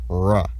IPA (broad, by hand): ɹ̠